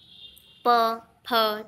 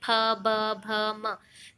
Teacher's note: देखिए होंठ एक दूसरे से मिल रहे हैं, जब प बोलोगे तब भी होंठ मिलते हैं, फ, ब, भ, म। सभी में होंठ स्पर्श हो रहे हैं एक दूसरे से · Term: ओष्ठ